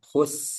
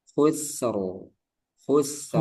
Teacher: Eh, alirkan dulu sinnya ya. Khus gitu. Khus baru lepas.